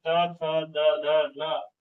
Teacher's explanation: त वर्ग के अंतर्गत आएगा, यानी कि ऊपरी दांतों के निकट